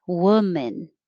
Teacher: like men's room 29 woman the looks like an o but it sounds like an uh like took so you don't round your lips